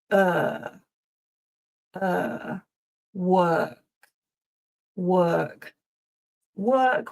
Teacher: it's a long sound. So the mouth is kind of neutral again. And it's a bit like the schwah. It's that but instead of uh it's longer.